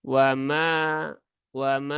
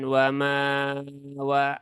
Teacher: wama ada alif setelah fathah ya, dia mat asli ya, 2 harokat, maka cukup 2 harokat saja.